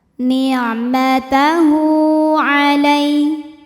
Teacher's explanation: ada huruf lin sebab ada ya sukun didahului baris fathah, maka dibacanya lembut atau lunak